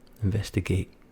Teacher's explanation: Actually, we would skip the last T, of course.